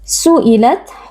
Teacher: huruf tak sukun kita baca dengan sedikit hembusan nafas